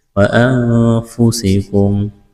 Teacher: نون ساکن کے بعد فا ہے، یہاں پر اخفا کریں گے۔